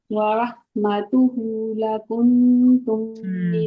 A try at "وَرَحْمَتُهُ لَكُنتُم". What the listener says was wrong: में जब आपने पढ़ा तो आपने सिर्फ हु के ऊपर पेश पढ़ी। वरहमतुहु लकुंतुम, आपने हा की उल्टी पेश की मिकदार कम कर दी, ठीक है।